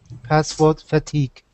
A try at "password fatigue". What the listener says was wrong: Very, very good reading. Excellent pronunciation.